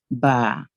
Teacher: ہمارے کیا دونوں ہونٹ آپس میں جڑتے ہیں، جو ویٹ پارٹ ہوتے ہیں نا وہ آپس میں جڑتے ہیں، تو با ادا ہوتا ہے